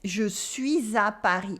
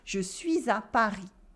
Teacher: And I do la liaison between suis and a.